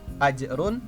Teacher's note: ajrun Khoiru itu tidak boleh dibaca dengung melainkan dibaca dengan sangat jelas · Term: Izhar